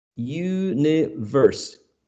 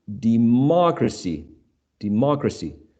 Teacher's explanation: so the stress falls on the third syllable from the end